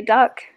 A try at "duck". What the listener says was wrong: Sounds like you're saying dark.